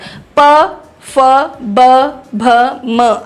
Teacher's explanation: प फ ब भ म, आपके लिप्स आपस में, होंठ आपस में टकराते हैं